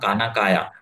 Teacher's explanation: म्हणजे काय, तर द्रविड भाषांमध्ये तर वर्ग द्वितीय आणि चतुर्थ अजिबातच नसतात. म्हणजे द्रविड मातृभाषा असणारा माणूस खाना खाया असं विचारताना काना काया असंच विचारू शकतो. कारण त्याच्याकडे जे भांडार आहे ध्वनीचं त्याच्यामध्ये ख आणि घ हे नाहीतच.